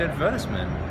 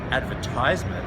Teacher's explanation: advertisement that has an S and the emphasis is on the second syllable whereas in advertizement they use a Z and the emphasis is on the third syllable